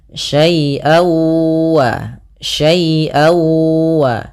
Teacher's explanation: Yaitu suara tanwinnya masuk kepada huruf wau.